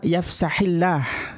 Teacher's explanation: Lafaz Allah dibaca terkik ya, tipis ya.